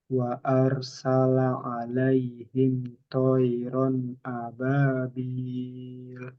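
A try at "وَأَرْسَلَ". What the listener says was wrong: Wa'ar tebalkan. Salah.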